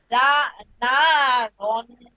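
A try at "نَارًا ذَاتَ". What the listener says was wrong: র, এই যে দেখেন হ্যাঁ, তানবিনের পরে জাল কিসের হরফ, ইকফার হরফ, তাই এখানে রন না বলে রং বলবো, না রং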